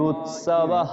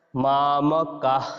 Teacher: বিসর্গকে আমরা হ রূপে উচ্চারণ করব কিন্তু হ টা পুরো দীর্ঘ হবে না একটু কম হবে